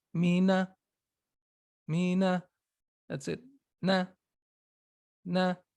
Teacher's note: the shortest, of course, is the noon with fatha